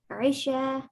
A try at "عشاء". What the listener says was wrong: Say the Hamza. عشاء.